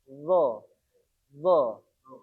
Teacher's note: Lidah kita menempel di gigi depan atas.